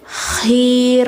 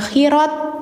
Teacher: Ketika dia mati maka suara T menjadi H. Jadi bacanya itu khih bukan khirat. · T-nya dihilangkan kalau misalnya dia posisinya mati